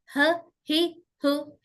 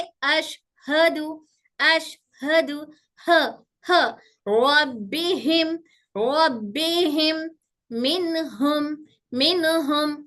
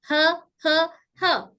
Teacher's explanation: तो ह की आवाज कहाँ से? हमारे हलक के निचले हिस्से से अदा होगी